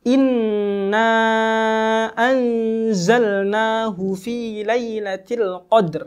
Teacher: Nun bertasydid yang kita keluarkan makhrojnya kita keluarkan suara gunanya dari rongga-rongga hidung